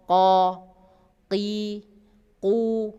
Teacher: pangkal lidah menyentuh pada langit-langit yang sejajar di atasnya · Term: qaf